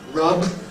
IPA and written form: rʌb (rub)